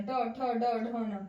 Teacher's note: ट वर्ग मूर्धा से बोला जाता है